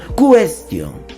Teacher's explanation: cuestión verdad elevando la mayor fuerza de voz aquí pues cuestión el acento está en la sílaba tión